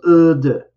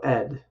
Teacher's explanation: Because it's a voice sound, the ed is d. It goes d. It doesn't go ed.